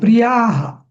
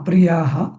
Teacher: प्रियः नाही प्रियाः दीर्घ येतो